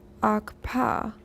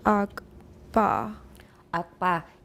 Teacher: That's the thing about double articulations. In these words, the two closures occur almost simultaneously.